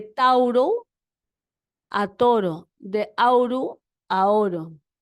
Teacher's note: Luego, el diptongo AU cambió a la O